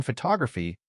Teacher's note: in photography, that first O turned into a schwah. It became fu.